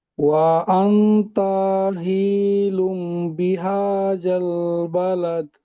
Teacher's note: এখানে নুন সাকিন ইখতিলাফ। তানবিনের পরে বা এসছে, তাই নুনকে মিমের দ্বারা পরিবর্তন করে 1 আলিফ পরিমাণ গুণনা করে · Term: ইকলাব